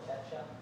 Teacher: And then something really interesting that happens here is oftentimes when we have a T plus a Y in American English, we change it morphs into a ch sound